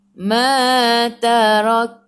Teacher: Tarak berhenti. Bila berhenti kaf kena ada angin sedikit sahaja. Jangan banyak sebab takut jadi melantun pula. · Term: hamas